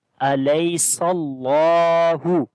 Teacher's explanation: Seen we connect with the name of Allah. The name of Allah we read in heavy sound, and also we long due to standing fatha on the lam.